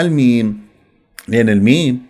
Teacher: الميم فيها مخرجين شفوي وخيشومي